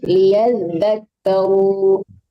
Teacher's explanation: ditahan, ada zalnya tasdid ya